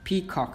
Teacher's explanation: Peacock, con pi bật hơi nha.